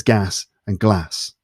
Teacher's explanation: the words gas and glass have the same vowel sound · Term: bath trap split